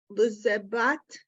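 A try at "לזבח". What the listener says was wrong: Lezevach. Zevach. I thought you said T.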